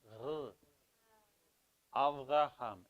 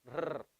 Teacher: You're rolling your tongue still, but from the back instead of from the front. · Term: Hebrew R